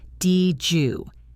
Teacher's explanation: The D and the Y mix together to create a J sound. So it becomes dj.